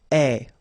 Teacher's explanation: The ending for je will be ai. Alright? And you pronounce it e. Remember, open e.